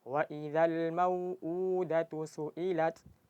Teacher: Jadi mad badal itu panjangnya dua harakat.